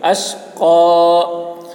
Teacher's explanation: باریک ہوگی اور کھینچیں گا، مد ہے، لَا يَصْلَاهَا إِلَّا الْأَشْقَى. قاف پر وقف کر رہے ہیں تو زبر کو کھڑا زبر سے بدل کر پڑھیں گے